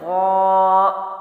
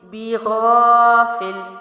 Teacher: الف خالی سے پہلے زبر ہے تو لمبا کیا